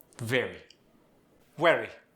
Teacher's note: There, did you hear it? The V becomes a W.